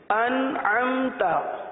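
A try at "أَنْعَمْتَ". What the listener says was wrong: یعنی نون کے اندر, حرف نون کے اندر, ان کے نون کے اندر سکون کو نہیں ہلائیں گے. حمزہ نون زبر, ان پڑھنا تو غلط ہے نا, اس حرف کو ان پڑھنا غلط ہو جائے گا. حمزہ نون زبر ان, عین میم زبر ام, تو کیا بن گیا, ان ام نہیں,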